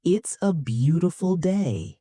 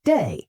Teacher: My voice falls on the word day. Day. It's not a question, it's a statement. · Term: falling intonation